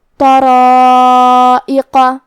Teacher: ہم اس مد میں اپنی آواز 4 مد کے برابر لمبی کریں گے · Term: مد واجب متصل